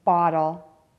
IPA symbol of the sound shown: ɑ